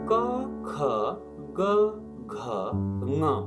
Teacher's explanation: जिब्राको पछिल्लो भागले कोमल तालुलाई छोएर उच्चारित हुने वर्णहरू हुन्। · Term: कण्ठ्य वर्ण